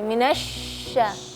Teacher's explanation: Suara huruf shin kadang-kadang hilang. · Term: makhraj huruf shin